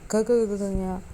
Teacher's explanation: ಇವು ಕಂಠದಿಂದ ಹುಟ್ಟುವುದರಿಂದ ಇವನ್ನ ಕಂಠ್ಯಾಕ್ಷರ ಅಂತೀವಿ